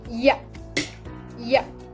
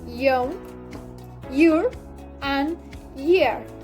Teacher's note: The sound is produced when the body of the tongue rises towards the most down part of the palate. The place of articulation is palatal. This phoneme sounds ya, ya.